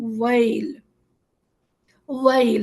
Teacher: ہم پہلے واو زبر کا حق ادا کریں گے اور اس کے بعد اسے یا سے ملائیں گے، تو یہ آواز بن جائے گی ویل۔